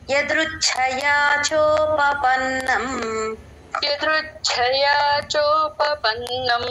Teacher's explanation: చ కి మహాప్రాణం చూసుకోండి అందరూ